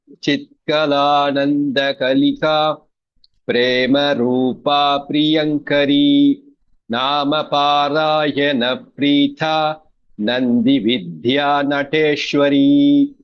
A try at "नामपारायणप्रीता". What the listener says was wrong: So in the third pada it is just Preeta. There is no Mahaprana. So it is Nama Parayana Preeta.